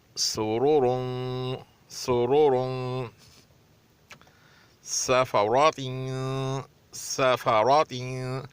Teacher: रा पर अगर पेश और ज़बर हो तो मोटा पढ़ा जाता है, अगर रा पर ज़ेर हो तो उसको पतला पढ़ा जाएगा, क्योंकि यहाँ पे दोनों पर पेश है इसलिए मोटा पढ़ा जाएगा, और सीन को पतला पढ़ा जाएगा। और सीन को इस तरह अदायगी हो कि सीटी सी आवाज़ निकले तो ज़्यादा अच्छा लगेगा।